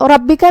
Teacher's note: کلمت ربک میں یہاں حرف الرا ہے اور اس پہ زبر ہے. یہاں را کا حکم ہے تفخیم، مطلب ہمیں اسے بھاری آواز میں ادا کرنا ہے. با پہ تشدید ہے تو 2 حرف کے برابر ہمیں با کو پڑھنا ہے.